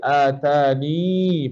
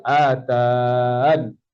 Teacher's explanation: Yang pertama kita baca dengan ya. Yang kedua kita baca dengan buang ya. Ertinya matikan pada dun.